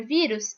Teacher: sílaba mais forte da palavra vírus é o vi e ela é a penúltima sílaba da palavra certo então ela considerada paroxítona as árvores para tá difícil eu